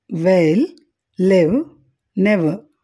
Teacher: ఇక్కడ ఉవ్ వాయిస్డ్. ఎందుకంటే ఈ శబ్దాన్ని ఉచ్చరించేటప్పుడు గొంతులో వోకల్ కార్డ్స్ కంపించడం గమనించవచ్చు